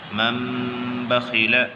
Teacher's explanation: قاری حفظ کی قرأت میں میم پر غنہ ہوتا ہے